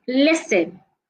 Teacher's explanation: we have silent letters examples of silent letters we have listen the T in this word is silent